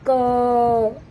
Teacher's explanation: देर तक बोलेंगे तो अ की ध्वनि आ रही है